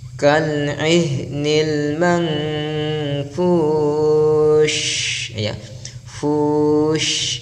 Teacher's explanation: ada bunyi huruf shin yang keluar di lisan kita yang berputar atau menyebar, tafashi atau intishar, menyebarnya suara huruf shin di mulut kita. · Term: at-tafashi